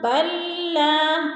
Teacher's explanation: لام ساکن کو نہیں پڑھنا، با کو لام کے ساتھ ملانا ہے۔ با لام زبر بل، لام الف زبر لا، بل لا، اس طرح ادا کرنا ہے۔ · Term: ادغام